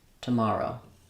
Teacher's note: the stress falls on the second syllable ma with the ah vowel